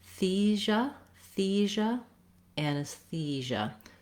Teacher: You want to make sure that you have a clear vowel there, and that's a syllable you hold longer. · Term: clear E vowel